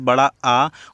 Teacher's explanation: जीभ का पिछला भाग सामान्य स्थिति से ऊपर उठे। जब आप इस वर्ड को आप पढ़ेंगे जैसे बड़ा आ और फिर आप अनुभव करेंगे तो आपको भी पता चलेगा कि हमारा जो जीभ है, हमारे जीभ का जो पिछला भाग है वो सामान्य स्थिति से थोड़ा ऊपर उठा हुआ है। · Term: पश्च स्वर